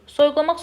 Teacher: Soyuqlamaq sözündə o, u, a, a hamısı qalın.